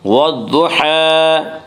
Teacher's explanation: حا کے اوپر کھڑا زبر ہے، کھڑا زبر کو ایک الف کے برابر کھینچ کر پڑھیں گے۔